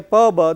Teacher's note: Both are plosive, both are bilabial.